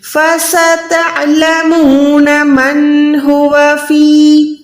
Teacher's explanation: نون ساکن کے بعد ہا ہے، یہاں پر نون کو ظاہر کریں، اظہار کا قاعدہ کریں.